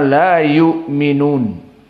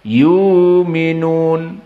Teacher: qiraah dari Abu Amr dibaca dengan ibdalul Hamzah maka hamzahnya sekarang diganti